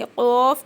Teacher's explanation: हम इसको काफ़ नहीं करेंगे, क़ाफ़ करेंगे। क़ाफ़ छोटी ज़ुबान के तरफ है ना, वहाँ पे लगाना है · ज़ुबान की जड़। ज़ुबान की जड़ को छोटी ज़ुबान के हिस्से से लगाने से क़ाफ़ अदा होता है